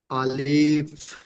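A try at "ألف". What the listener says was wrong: তাহলে প্রথম পড়ছেন আলিফ। আলিফ বলে একটু টান দিয়ে ফেলেছেন, টান হবে না। আলিফ বলেন, আলিফ, আরো জলদি।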